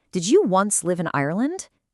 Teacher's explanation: See how the voice swoops down and then back up on the word Ireland? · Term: fall-rising intonation